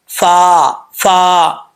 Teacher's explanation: اوپر والے جو 2 دانت ہیں ان کا نیچے والا جو کنارہ ہے نیچے والے ہونٹ کے تری والے حصے سے لگے گا تو فا پڑھا جائے گا